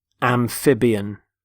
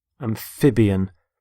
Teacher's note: Notice the stress on the middle syllable, amphib.